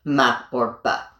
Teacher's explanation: bringing your two lips together to say m or b